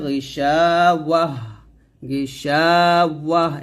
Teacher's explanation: যদি আমরা সেখানে ওয়াকফ ধরি তাহলে এই তাটা হা সেকিন হয়ে যাবে